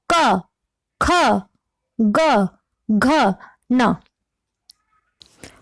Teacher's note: और क, ख, ग, घ, ण, जब हम इन वर्णों का उच्चारण कर रहे हैं तो हम देखते हैं कि हमारी जीभ का जो पिछला हिस्सा होता है वह सक्रिय हो जाता है, वह काम करता है और हमारी जो आवाज, इन वर्णों की जो ध्वनि निकलती है वह हमारे कंठ से होकर कंठ से निकल रही है